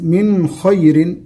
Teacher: النون في من خير النون مظهرة